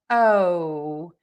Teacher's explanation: in English, we have this very long O vowel. And our mouth moves more for this vowel than it does in many other languages for the O sound. And so, think about moving your mouth.